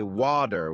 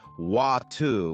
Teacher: In American English, people might say water with a d sound, while in British English, it's often wu with a t sound.